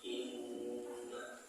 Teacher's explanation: huruf nun berharokat tasydid, membacanya dengan mendengung dan ditahan sesaat. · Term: guna